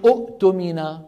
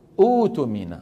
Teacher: كلامهم همزتين ثانيتهما ساكنه ثانيتهما ساكنه همزتين ورا بعض والثانيه ساكنه كانوا يبدلونها حرف مد من جنس حركه الهمزه الاولى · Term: البدل